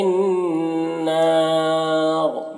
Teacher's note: فی النار یہاں پر نون مشدد غنہ ہوگا اور الف مدہ ہے اور یہاں پر وقف کریں گے تو را کا زیر سکون سے بدل جائے گا، تو را کو پھر پر پڑھیں گے اور یہاں پر وقف کی صورت میں مد عارض وقفی بھی ہوگا.